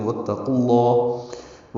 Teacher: قاف کو لام اس میں جلالہ سے ملائیں گے